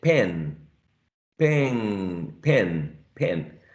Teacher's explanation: the final sound which is nasal is influencing uh the previous sound which is the vowel so we're talking about a partial continuous regressive assimilation now uh